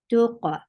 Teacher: La tuqa, for the circular lips attached with qaf, qaf will get sifa of qalqala